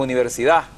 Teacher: esa d dental es un sonido débil va a terminar desapareciendo